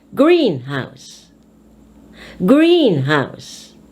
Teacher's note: In compound words, the stress is placed on the first word of the compound. Meaning, if you have a word consisting of 2 words, the first word is the one emphasized. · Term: compound stress